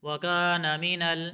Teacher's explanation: کاف کو باریک پڑھیں گے، الف مدہ ہے لمبا کر کے پڑھیں گے